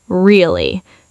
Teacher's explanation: with a flat, low tone, you just say, really? Flat and skeptical. You're not asking a question.